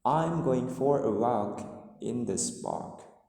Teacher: So you can see that the intonation is falling. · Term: falling intonation